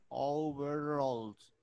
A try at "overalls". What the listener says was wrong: Muy bien, muchas gracias.